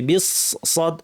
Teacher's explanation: এখানে বা গিয়ে সদকে ধরবে, সদ ভারী হবে, বিস সদ। জিহ্বার শীর্ষ নিচের পাটির দাঁতের গোড়ায় লাগিয়ে ভারী করে সদ বলতে হবে, আওয়াজটাকে উপর ঠেলতে হবে।